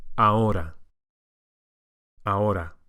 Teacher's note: in Spanish, we go straight from the A to the O.